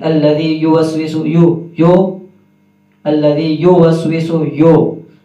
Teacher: تو پیش پہ ہمارے ہونٹ صحیح طریقے سے گول ہوں گے، پھر ہی اس کی ادائیگی درست ہوگی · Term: ہونٹ گول